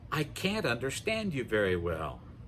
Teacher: Also notice that can't is stressed when we use it more than the I and the verb that follows.